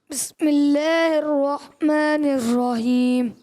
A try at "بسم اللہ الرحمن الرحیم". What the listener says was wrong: رحیم میں ہا کی ادائیگی. بسم اللہ الرحمن الرحیم.